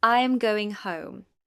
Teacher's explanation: The pitch falls at the end of the sentence.